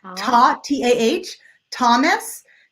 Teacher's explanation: Both of them are the short O sound that sounds just like an ah.